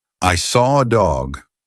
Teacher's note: I can't see an R but I said an r and that is because we have a feature called an intrusive R